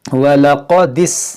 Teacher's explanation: ये दाल को सीन से मिला देंगे, बीच में जो आपको खाली अलिफ दिख रहा है, इस अलिफ को हम नहीं पढ़ेंगे, दाल को सीन से मिला कर पढ़ेंगे।